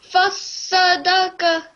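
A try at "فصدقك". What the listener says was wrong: Not fasadaka. It has alif as well. That has fatha. So fa. So fa, not fa.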